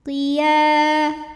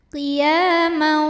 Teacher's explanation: sebab ada alif yang sebelumnya baris fathah. Maka huruf ya kita panjangkan 2 harokat. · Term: matobi'i dhahiri